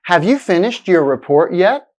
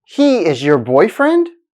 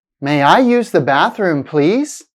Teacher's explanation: you will sometimes hear someone's voice get higher in Pitch than the beginning of the sentence that's the rising intonation it's used for yes no questions statements